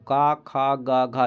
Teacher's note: आप गला पकड़ कर बोलिए साथियों, का, खा, गा, घा, देखिए कंठ से आवाज़ निकलता है ना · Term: कंठ ध्वनियाँ